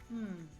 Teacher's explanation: our vocal cords vibrate when we make the M sound